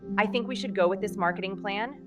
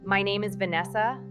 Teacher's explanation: That little upward lilt at the end completely drains your statement of all its power. It nonverbbally communicates, "I'm not sure about this. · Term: upward inflection